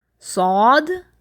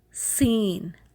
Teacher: پہلے میں نے صاد بولا موٹا کر کے، سین نرم کر کے